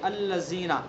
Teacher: اس کے اندر ذرا بھی ہمیں سختی کی سیٹی کی آواز نہیں نکالنی